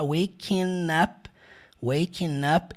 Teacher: não é waking. Aquele G não tem som. Vai ficar waking up.